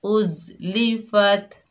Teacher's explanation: ज़ा सख्ती और सीटी वाला हरूफ है